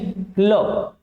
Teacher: ल आप उच्चारित करोगे तो आप पाओगे कि आपके जीभ के साइड से क्या निकल रही है हवा निकल रही है इसीलिए ल को अपन क्या कहते हैं पार्श्विक व्यंजन कहते हैं